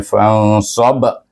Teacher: Pertama kita baca nun ini, fa dengan nun ini dengan ifa hakiki, dua harakat. Kemudian ba itu kita mati dengan qalqalah kubra. Bunyinya fansab.